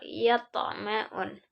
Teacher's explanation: Nah, di sini ada di pertengahan ayat yaitu ada to, huruf to, to sukun sehingga dibaca dengan mantul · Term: qalqalah sugro